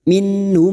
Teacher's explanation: nun sukun bertemu ha Idhar halq dibaca jelas tanpa mendengung